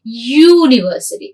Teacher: words beginning with U have an initial sound, Y sound.